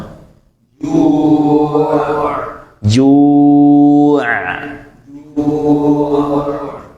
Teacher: huruf-huruf ini tidak tertahan layaknya huruf-huruf syidah namun alirannya juga tidak selembut huruf-huruf rakwah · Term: sifat pertengahan